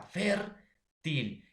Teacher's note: lleva la mayor fuerza de voz en la penúltima sílaba